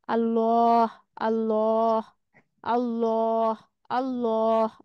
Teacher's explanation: ঠোঁটটা কিন্তু গোল হচ্ছে আর মোটা করে উচ্চারণ হচ্ছে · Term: পোর